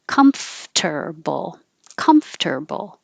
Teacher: You have to close your lips for the M, and then you have to open them enough so that your top teeth are behind your bottom lip, making airflow. Comf, and then make a T.